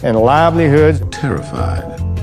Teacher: in Southern speech, I is a one-part vowel in many cases, sounding more like ah than I. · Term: I ungliding